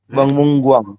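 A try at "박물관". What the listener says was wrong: Ya, betul ya.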